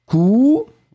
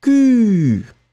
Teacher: le son qui est vraiment très très rond